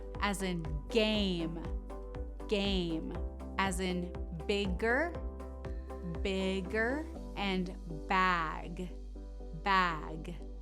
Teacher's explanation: similar placement as the k sound but less sharp in the front of the mouth more lower in the throat